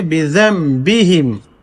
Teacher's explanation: دیکھیے اصل میں بے ذن بہم ہے لیکن چونکہ با ہے میں نون ساکن کے بعد فوراً، تو اس نون کو میم سے بدل کر کے یعنی اقلاب کر کے پڑھیں گے